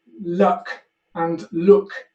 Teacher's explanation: the duck vowel moves in space as the foot vowel and these two become conflated